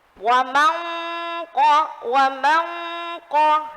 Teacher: Ketika mendengung itu sudah tebal. Karena apa? Karena setelah huruf nun sukun, hurufnya qaf. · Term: ikhfa